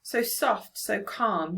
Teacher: more use of sibilants here and it makes the line sound soothing